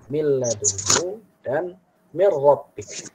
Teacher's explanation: pada huruf lam dan ra jangan la bi ghunnatin, jangan dibaca dengan ghunnah